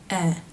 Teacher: To make this sound, the jaw drops, eh, and the tongue remains forward with the tip touching lightly behind the bottom front teeth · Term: eh as in bed vowel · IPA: ɛ